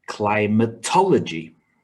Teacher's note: has five syllables with stress on the third syllable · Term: word stress